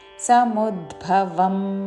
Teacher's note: సముద్భవ ద కి మహాప్రాణ అక్షరము